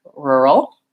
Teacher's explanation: this final L is a syllabic l so it has the schwa sound and then the L